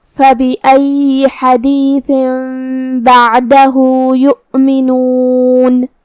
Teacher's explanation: بعدہ یؤمنون، کلمت یؤمنون میں یہاں واو پہ حمزہ ہے، تو ہم حمزہ کو ظاہر کریں گے اور حمزہ کی ادائیگی حلق کے نیچے والے حصے سے ہے